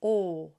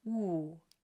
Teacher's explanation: but when I pronounce o I bring it forward and it feels like it's sitting under my nose